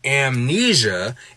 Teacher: But when we get something like amnesia, and we can split that M sound and that N sound into two syllables